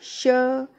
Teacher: श मूर्धन्य श। जब वर्ण श का उच्चारण करते हैं तो जीभ मूर्धा का स्पर्श करती है, इसीलिए इसे मूर्धन्य श भी कहा जाता है।